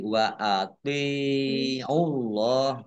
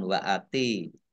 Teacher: Wa ati'u, tok ya, tok kasroh ya sukun mat tabi'i panjang 2 harokat. Membaca T-nya ini agak berat ya, dibedakan dengan tak. Kalau tak ringan wa ati, tapi ini tok.